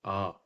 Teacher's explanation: है जब आ बोलते तब थोड़ा जैसे बड़ा बोलिए आ तो आ बस मुह बहुत खुलता है सबसे ज्यादा